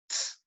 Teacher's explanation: você tem alveolar, você tem um t, que é explodido num ts, né? Então, você tem ts, né? · feita de uma oclusiva explodida numa fricativa. Então, é uma oclusiva que explode, né, numa fricativa.